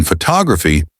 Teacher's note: For example, in photography, the stress is on the second syllable